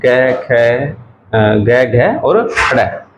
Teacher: कहां से बोले जा रहे हैं? कंठ से।